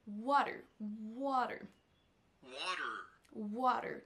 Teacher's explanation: c'est la première syllabe qui est accentuée, qui ressort plus que les autres.